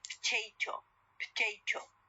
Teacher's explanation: there is elision of the O sound